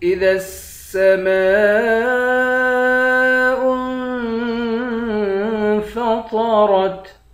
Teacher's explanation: ذال کو سین کے ساتھ ملا کر سین کو سختی کے ساتھ جمع کر پڑھیں گے۔ · حمزے کو نون سے ملا کر نون پر اخفا کریں گے۔